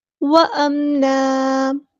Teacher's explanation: یہاں پہ اگر ہم وقف کریں گے تو دو زبر کو ایک زبر میں بدل دیں گے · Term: مد عوض